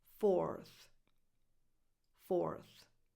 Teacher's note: You just add a voiceless th, as in think, at the end of the number 4.